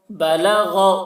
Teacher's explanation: با زبر با، لام زبر لا، بلا، غین زبر غا، بلغ، غین کو حلق سے ادا کر رہے ہیں، غین کی آواز موٹی ہو رہی